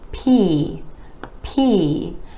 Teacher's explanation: the P is another of those air puff sounds, meaning it's made with a tiny puff of air being released